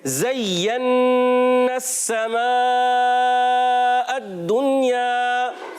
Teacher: زا کی ادائیگی سیٹی کے ساتھ ہوگی، نرمی، نرم حروف میں سے زا کی ادائیگی ہوتی ہے، حروف رخوہ میں سے ہیں۔